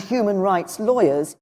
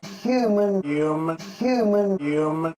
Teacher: in New York accents the H is dropped and we're left with you